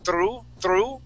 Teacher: you're slightly rolling that R and you're saying through through okay so you want to say